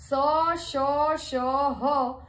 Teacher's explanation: बोलते समय सीटी के जैसी ध्वनि उत्पन्न होती है उन्हें उष्म व्यंजन कहा जाता है